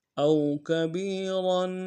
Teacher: صغیرا او کبیرا، حمزہ کو واو کے ساتھ ملانا ہے، واو لین بغیر کھینچے پڑیں گے، با کو یا کے ساتھ ملانا ہے، یہی مدہ ایک مقدار میں کھینچیں گے